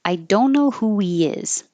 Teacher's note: I would emphasize the don't because negative words are more likely to be emphasized without any context. I put a invisible or hidden W here because when you go from who to he, actually we're getting rid of the H and the pronoun he.